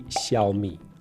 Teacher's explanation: Xiaomi, Xiaomi, Xiaomi, Xiaomi. In Chinese, the X is pronounced like a soft sh sound. So it should be Xiaomi.